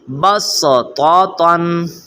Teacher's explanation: آگے ہے بسطتن، بسطتن، یعنی صاد کو لکھا گیا ہے، اوپر سین ہے، لیکن ہم نے صاد کو نہیں پڑھنا، سین کو پڑھنا ہے۔